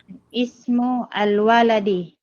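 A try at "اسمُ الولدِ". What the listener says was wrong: Paano po basahin ng diretso yung ismu al-waladi? Yung parang di mag-isa-isa. Yung diretso. Ismul waladi. So yun po yung tamang pagkabasa. Ismul waladi.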